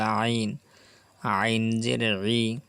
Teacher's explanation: গলার ভিতরে যাবে, কণ্ঠনালীর মাঝখান থেকে চিপে বলতে হবে আইন